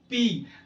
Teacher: दोनों होंठ आपस में मिल रहे हैं तो पफ ऑफ एयर बाहर निकलता है। इसका मतलब होंठों के मिलने से, when टू lips come together then this sound gets created और produced, and that is why lips जो होते हैं उन्हें क्या कहा जाता है? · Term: बाइलेबियल